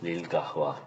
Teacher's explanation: Kaf sound is changed into hard G sound like goat.